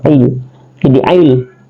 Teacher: La, karena ada alif berdiri depannya maka dia adalah mad tabi, 2 harakat, dibaca panjang 2 harakat ya. Ain dia adalah waqtul halki, keluar di pertengahan tenggorokan.